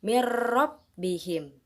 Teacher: bertemu dengan huruf lam contoh yang ketiga yaitu mirrobbihim ada nun sukun yang bertemu dengan huruf ro maka kita memasukkannya tanpa dengung